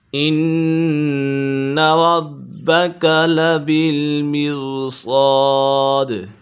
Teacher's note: ان نون مشدد ہے، نون مشدد میں ہمیشہ غنہ ہوتا ہے۔ ربک با مشدد ہے اور یہ با حرف قلقلہ میں سے بھی ہے